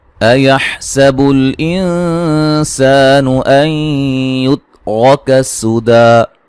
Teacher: سین کو باریک سیٹی سے، نون ساکن کا باریک اخفا ہے، سا مد اصلی ہے.